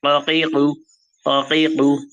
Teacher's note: একটু জিভের গোড়ার অংশ থেকে, গলার দিকে, গলার শেষ জিভের শুরু, এই জায়গা থেকে হবে কফ, ককিকু ককিকু, এরকম আওয়াজ হবে, ককিকু কফ।